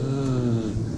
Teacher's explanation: It vibrates. So you see you have voicing with the Z and no voicing with the S